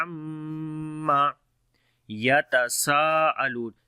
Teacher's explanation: Ain we read from the middle of the throat, and on the meme there is shadda sign, we make gunna